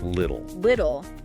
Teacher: The two sound in little is often pronounced as a softer d